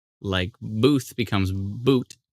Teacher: francophones don't really say the th sound. It comes out as a hard T, like booth becomes boot.